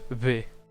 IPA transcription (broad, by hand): βe